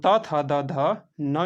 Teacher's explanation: त, थ, द, ध न जो होता है दोस्तों उसे दंत द्वारा बोला जाता है, दंत ध्वनि कहलाता है।